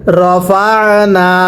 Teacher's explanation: র জবর র, ফা আইন জবর ফা। এই যে আইনটা উচ্চারণের সময় গলার মধ্যে চাপ দিয়ে পড়তে হবে